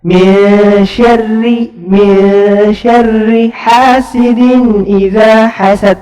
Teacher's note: Semuanya itu adalah huruf ikhfa yang dibacanya harus dengan dengung, gunnah 2 harakat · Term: ikhfa haqiqi